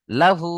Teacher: উল্টো পেশ ও মাদ্দার সমান, তাই উল্টো পেশকে একালিপ টান দিয়ে পড়তে হবে।